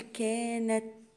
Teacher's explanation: أقول ق قد، والدال ساكنة فهقلقلها، أقول قد. قد كانت، التاء عندي ساكنة وهي من حروف الهمس